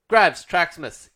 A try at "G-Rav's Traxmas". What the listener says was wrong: Look, when you say Grav, it's meant to be G-Rav. You know this.